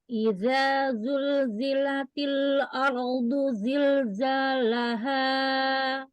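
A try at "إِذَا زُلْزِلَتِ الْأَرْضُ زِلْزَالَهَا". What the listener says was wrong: Idza, al-jaufnya keluarkan. Idza, jangan dalam. Idza zulzilatil ardu zilzalaha. Lu, tebalkan, itbakkan. Ketika dhammah sama, harus itbak karena dia sifatnya itbak ya. Idza zulzilatil za, keluarkan al-jaufnya.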